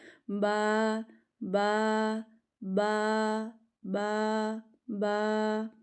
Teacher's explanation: پڑھیں ذرا، با ہو، دونوں ہونٹ آپس میں ملیں گے، اوپر اور نیچے والے ہونٹ آپس میں ملیں گے اور پڑھا جائے گا با با با با با، ٹھیک ہے؟